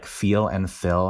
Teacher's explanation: it's almost like feel and fill have the same vowel, where they merge, right? A merger is when two distinct vowels become the same. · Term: feel-fill merger